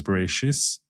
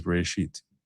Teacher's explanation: we read this as a suf, which has an S sound. Israelis read it as a tuf. They don't have a suf, the Israelis.